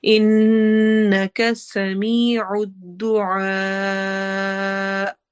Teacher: سمیع الدعاء آخر میں حمزہ پر جھٹکا ہوگا · دعا میں عین اگین حروف حلقی میں سے ہے، حلق سے آواز آئے گی، تھروٹ کے مڈل پارٹ سے یعنی درمیان والا حصہ ہے، دعا کو ہم لمبا کرتے ہوئے